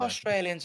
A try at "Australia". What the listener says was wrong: Yeah, but we say Australia properly. You guys don't say Australia properly. You're like, you lose the L at the end.